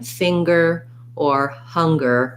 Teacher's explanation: there are some times, like in finger or hunger, where we have an NG sound plus a G sound. So you want to watch out not to say finger and singer, but finger and singer.